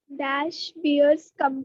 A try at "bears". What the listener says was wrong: बियर्स नहीं रे, बेयर्स. Bear is something else.